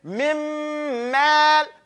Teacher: you make complete idgham, you completely go to the next letter and close your lips completely